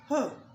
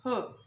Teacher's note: H is voiceless sound, rather it is glottis sound